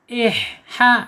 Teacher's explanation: Ha di sini makhrajnya ada di tenggorokan tengah ya.